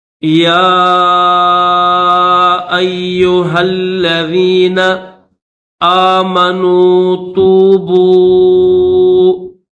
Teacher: یا کے اوپر کھڑا زبر بھی ہے اور چھوٹی مد بھی ہے، تو اس کو تھوڑا کھینچیں گے